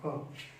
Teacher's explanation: क में ह जोड़े ख, अब आप ख का उच्चारण कीजिए, आपको ऊर्जा श्वास ज्यादा लगेगी ख। ऐसे आपने कोई सा भी वर्ण ले लीजिए, जैसे आपने ज में ह जोड़ा तो झ। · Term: महाप्राण